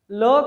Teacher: ल का उच्चारण स्थान भी दंतस्य है।